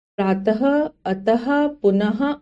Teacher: विसर्ग इसका उच्चारण ह की तरह होता है